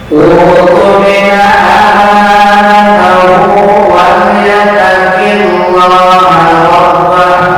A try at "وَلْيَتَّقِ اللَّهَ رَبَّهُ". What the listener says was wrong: Masih dibaca tafkhim. Tarkik tipis. Wal yattaqillah rabbah.